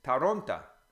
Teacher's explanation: the O, if it's not stressed in a word, becomes A. So Toronto is Taronta, because the O becomes an A.